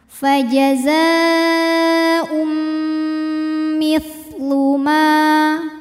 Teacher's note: Maka bunyi tanwin dileburkan ke mim, bukan lagi tapi disertai bunyi dengungan. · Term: idgham bi gunnah